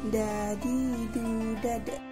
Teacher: Melafalkan huruf Da menyentuhkan ujung lidah ke gusi bagian atas. Dalam keadaan mati, huruf Da terdengar suaranya memantul.